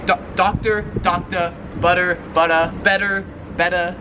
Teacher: how australians pronounce the r sound at the end of a word so they just don't really pronounce it